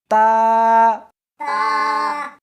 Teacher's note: اس حرف کو زبان کے اوپر کے تالو سے ملا کر پڑھیں گے